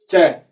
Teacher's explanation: जब आप च का उच्चारण करते हैं तो आपकी जीभ आगे से उठ के तालु से, यानी मूर्धा से पीछे की तरफ, मसूड़े से पीछे की तरफ लगती है, वहां से आवाज निकलती है, इसलिए इसे तालव्य कहा जाता है।